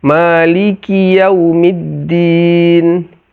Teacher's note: Nun, semuanya huruf istifal, huruf tipis. Lidah kita landai di bawah, tidak naik ke atas sehingga menjadi tebal dia.